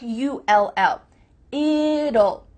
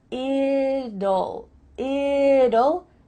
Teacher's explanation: when we say the contraction it will we kind of add a little you sound before the L it kind of sounds like you ll it'll so here we